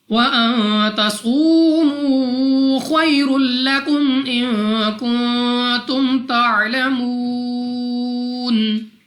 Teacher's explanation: نون ساکن کے بعد تا حروف اخفا میں سے ہے غنہ کریں گے. صاد مستعلیہ میں سے ہے موٹا پڑا جائے گا.